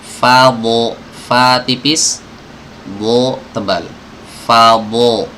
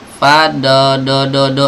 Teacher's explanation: Fa harus dijaga ketipisannya, dot juga harus dijaga ketebalannya.